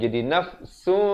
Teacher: Tapi bila datang ba, ditukarkan bunyi nun kepada bunyi mim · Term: iqlab